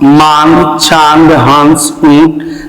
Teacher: अनुनासिक का उच्चारण नाक और मुंह दोनों से होता है।